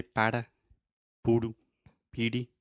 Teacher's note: your tongue is just touching the top of your mouth really really fast and it's just a quick little tap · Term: flap T